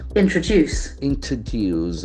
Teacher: accent force on the third syllable